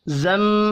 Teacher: मीम मुशद्दद पर गुन्ना करना है